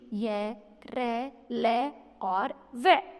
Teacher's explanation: इसके उच्चारण में जीभ, तालु, दांत व होठ का कहीं भी पूर्ण स्पर्श नहीं होता है। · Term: अंत्यस्थ व्यंजन